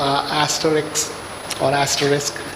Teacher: first you have a vowel, then you have a fricative, then t is a plosive